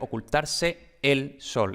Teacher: la pronunciación más esmerada de todas pues sería ocultarse el sol eso serían dos vocales totalmente separadas entonces tendremos que escribir dos es luego aquí tenemos una pausa